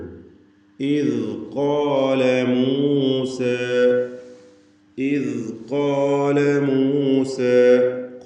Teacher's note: നാവിൻ്റെ അറ്റത്തിൻ്റെ മുകൾ ഭാഗവും മേലെ മുൻപല്ലുമാണ് ദാലിൻ്റെ മഖ്റജ്. റഖാവത്തോടുകൂടി, അയവോടുകൂടി ഉച്ചരിക്കേണ്ട അക്ഷരം കൂടിയാണ്.